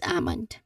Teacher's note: you do not pronounce the letter L sound because again here there is a silent L. When we say silent L it is not pronounced it's just there but we do not say it actually in the word.